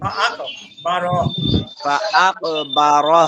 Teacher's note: ফা আকবারা কপে কলকলা হবে।